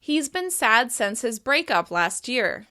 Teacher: In this example, break is being stressed.